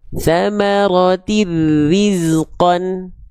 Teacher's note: Pertemuan nun sukun atau tanwin berjumpa dengan huruf lam atau huruf ro dibaca meleburkan bunyian tanpa disertai dengung. Artinya enggak ditahan. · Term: Idgum bila gunah